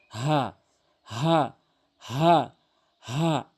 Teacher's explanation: এটি হালকের শুরু থেকে হা এভাবে উচ্চারণ করতে হবে